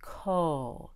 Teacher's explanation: Notice that my lips are very round for the O